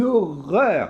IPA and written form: ɔrɶr (HORROR)